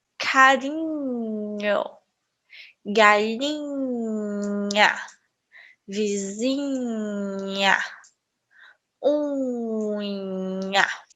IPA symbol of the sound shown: ɲ